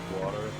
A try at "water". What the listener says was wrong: You say that in such an American tone. Water.